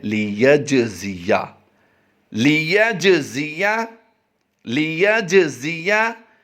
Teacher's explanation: जीम हरूफ़ कलकला से है, यहाँ पर कलकला करके हम अदा कर रहे हैं।